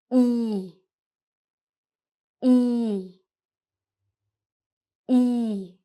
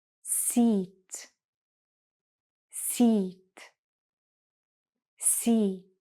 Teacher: It's a little bit higher, closer to the front. But when you say E, you stretch out your lips a little more and it's a long sound. E. Your lips should feel a little tighter too. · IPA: /i:/